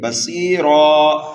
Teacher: را کو دونوں صورتوں میں پر پڑھنا ہے، وقف اور وصل کی حالت میں